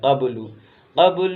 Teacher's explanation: با پر قلقلہ کریں گے